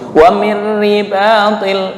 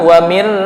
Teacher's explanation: untuk idgham bi la gunnah udah beda karena tanpa dengung, langsung wa mir ribatil, bukan wa mirri. Nah, itu enggak boleh karena non mati bertemu ro idgham bi la gunnah.